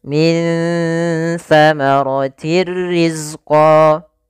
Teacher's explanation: Ikhfa yaitu ditandai dengan nun sukun bertemu dengan huruf tsa yaitu cara membacanya samarkan nunnya kepada makhraj daripada huruf tsa makhraj tsa adalah ujung lidah menempel dengan Gigi Sari kita maka · Mad thi'i ada fathah bertemu dengan alif dua harakat